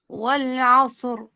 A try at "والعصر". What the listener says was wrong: ما تعملش تكرار الراء، ولا عصر راء واحدة.